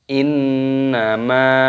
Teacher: nun tasdid hukumnya gunnah, dibaca berdengung. Innama, mimnya panjangkan, ada mad jaiz munfasil, boleh dibaca 4 ataupun 5 harokat, 5 ketukan.